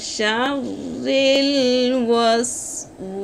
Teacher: শিনের মাখরাজ হলো জিহ্বার মধ্যখানে উপরে তালুর সঙ্গে লাগাইয়া।